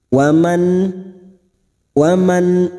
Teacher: nun sukun harus dibaca jelas tanpa mendengung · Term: Idhar halq